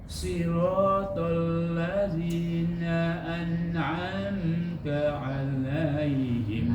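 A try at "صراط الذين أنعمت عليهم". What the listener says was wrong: Nah, ini lebih bagus.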